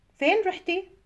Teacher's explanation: The end of the question is rising.